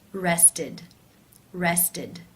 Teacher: is the t t sound therefore it is case three where the e d is pronounced as the e as in sit with the d sound